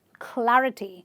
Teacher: again you are stressing on the third last syllable because it ends with the ty.